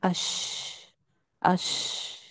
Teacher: شین کی ادائیگی میں آواز مخرج میں منہ میں پھیل جاتی ہے. جو شین کا مخرج کہاں ہم نے پڑھا کہ زبان سینٹر سے اٹھ کر اوپر سینٹر تالو کو لگتی ہے، درمیان سے اٹھ کر اوپر درمیان تالو کو لگتی ہے، تو وہ آواز منہ میں تھوڑی سی پھیل جاتی ہے. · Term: تفشی